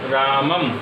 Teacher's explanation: तो आपको नाक से ध्वनि निकलती हुई महसूस होगी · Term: अनुस्वार